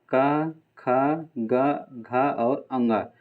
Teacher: क से किससे बोलते हैं? कंठ से बोलते हैं। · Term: क वर्ग